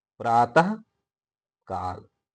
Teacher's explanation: तो प्रात के साथ आह की मात्रा लगी हुई है और उच्चारण भी अह का हो रहा है, और उत्तर पद काल है, उत्तर पद का जो पहला ध्वनि है वो है का, तो दोनों ही शब्द जुड़ जाएंगे और बीच में जो विसर्ग है वो उसी प्रकार आ जाएगा, प्रातः काल। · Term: अह की ध्वनि